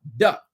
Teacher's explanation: It's impossible because once it's off your tongue, it's gone. There's no way to elongate the touch of the tongue to the top of your palate. Da. It's just very staccato.